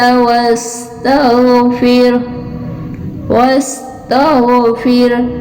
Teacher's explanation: غین جو ہے یہ حروف مستعلیہ میں سے ہے، یعنی پر اور موٹا